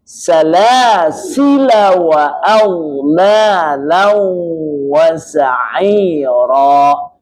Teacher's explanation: La-nya tidak dibaca dengan mad. Jadi alifnya tidak berpengaruh dengan mad. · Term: Cara wasal